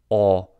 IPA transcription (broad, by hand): ɔ